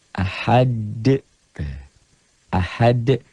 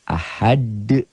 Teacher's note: Jadi ini tuh asalnya dhammah tain menjadi sukun bukan dalam tulisan tapi dalam bacaan. Ahad bacanya ada e-nya. Kayak bola yang mantul jatuh tidak langsung diam, mengeper, mengembal. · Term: qalqalah